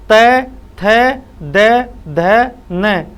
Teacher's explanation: जब अपनी जीभ है ना, जीभ ये ऊपर और नीचे वाले दांतों के बीच में फंसती है, और जब बीच में फंसने से ही इन वर्णों का उच्चारण होता है, तो इनको अपन दंते वर्ण बोलने में कोई दिक्कत नहीं है।